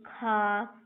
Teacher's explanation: खा महाप्राण अघोष प्रकार का व्यंजन है। खा में अधिक वायु निकलती है, पर यह अघोष है